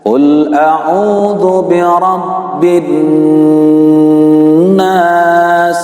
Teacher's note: lama kita mendengung suara ketika ghunah ini adalah dengan cara 3 ketukan